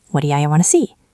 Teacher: The T turns into a fast D flap. The O of do reduces. The U becomes ya.